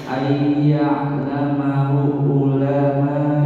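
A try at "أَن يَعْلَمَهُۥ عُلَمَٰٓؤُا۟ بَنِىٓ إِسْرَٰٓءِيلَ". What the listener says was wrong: Ya, ada waw kecil atau maksilah qasirah, dua harokat. Ayya'lamahu ulama bani Israil. Ya, punya pendek. Jadi wawunya itu hanya untuk hosing. Hanya untuk tangkringan. Apalagi untuk tangkringan. Hanya untuk tatakan, hanya untuk rumahan huruf hamzah. Jadi wawunya itu nggak ada, maksudnya tidak dibaca, hanya ditulis. Yang dibaca hamzahnya. Jadi dia pendek. Terus kemudian setelahnya ada alif.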